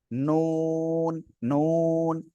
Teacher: জিহ্বার আগা তার বরাবর উপরে তালুর সাথে লাগবে কোন দাঁতের সাথে না